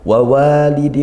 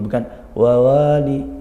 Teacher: wawu itu makhrajnya dari dua bibir, maka kita menggerakkan dua bibir ketika dua-dua wawu ini, bukan wawali.